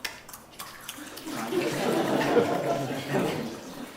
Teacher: This is the post-alveolar click. I call this the bubble gum click. It's the noise people will insist on making when they're eating bubble gum, going.